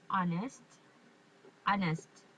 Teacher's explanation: we didn't pronounce the h just honest honest